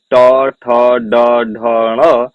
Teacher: ट वर्ग के उच्चारण स्थान की बात करूं तो ट वर्ग मूर्धा